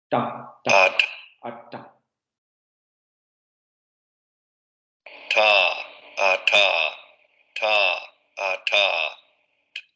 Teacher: nos lo va a pronunciar con los alvéolos, no con los dientes · la parte de la lengua sube a la zona de los alvéolos